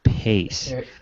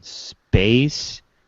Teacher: The P in pace is accompanied by a fairly strong puff of air called aspiration, whereas the P in space is not. However, this difference in aspiration is never used to distinguish two different words in English.